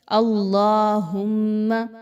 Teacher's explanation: اللہ کو سب سے پہلے تو یہ کہ پر پڑھا جائے گا، باریک نہیں پڑھنا، اللہم نہیں کہنا بلکہ اللہم، ٹھیک ہو گیا۔